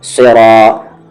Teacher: نس، صاد heavy letters میں سے ہے، اہ دی نس، پھر را کو ہیوی کریں گے کیونکہ اس کی آواز اوپر کی طرف جا رہی ہے